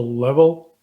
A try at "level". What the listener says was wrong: Level. Just hold your the last syllable is a little bit rushed for the vowel. Level.